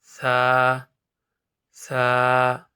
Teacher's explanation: زبان کی نوک یعنی زبان کا سیرا سامنے والے دو دانت کے سیرا میں لگے تو سا ادا ہوتا ہے